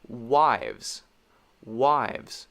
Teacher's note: I am touching my bottom lip on my teeth when I make the V sound.